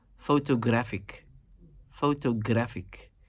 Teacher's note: You're emphasizing the third syllable in this particular case.